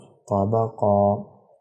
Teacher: وقف کے دوران قاف کا ایک زبر ہٹ جائے گا، ایک زبر کو ایک الف کے برابر کھینچ کے پڑھیں گے